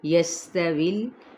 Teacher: سین پہ سیٹی، واو کی زیر کو لام کے ساتھ ملائیں گے